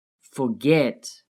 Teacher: The verb forget has two syllables, forget. Notice how the last syllable is stressed, forget. get is stressed.